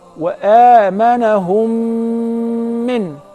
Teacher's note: if the first mim is non-vowel or sakina, followed by a voweled mim, so I will merge the first in the letter and I will pronounce them as one